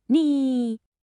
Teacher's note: Kind of imagine your voice dipping down and then scooping right back up. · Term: falling rising tone